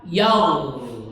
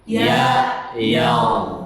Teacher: Alirkan karena ghain itu rokhwah, mengalir suaranya. Jadi enggak ya berhenti, enggak, tapi yaul. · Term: ghain sukun